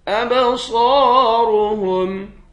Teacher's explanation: با پر قلقلہ کریں گے، صاد اور را دونوں کو موٹا پڑھیں گے، صاد کو ایک الف کے مقدار کھینچ کر پڑھیں گے، الف حروف مدہ ہے۔